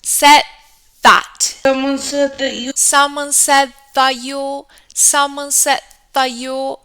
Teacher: So, since we have an alveolar sound and then a dental sound following, what happens is that this d sound that we produce touching behind our teeth will transform into a dental sound to ease articulation. This is something that native speakers do in order to speak faster, alright? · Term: assimilation